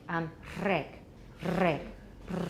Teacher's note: instead of a regular alveolar trill, you're putting your tongue closer up, so we're getting noise because there's air rushing through a smaller space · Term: more fricative